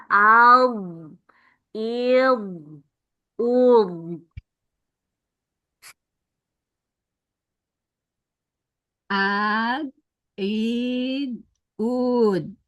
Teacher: terasa tepi lidahnya kena geraham